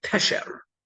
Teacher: That's this kind of noun where general, assuming no guttural letter, which can change the nikud, where you have two segals and the noun is stressed on the first syllable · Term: segolate nouns